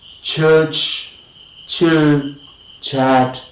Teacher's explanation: The tip and the blade of the tongue is lifted towards the center of the roof of the mouth and fronted towards the alveolar, and we have palato alveolar, church, chill, chill.